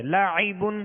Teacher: عین وسط حلق سے یعنی درمیان حلق سے